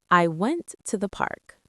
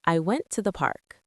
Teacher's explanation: I hear stress on went and park.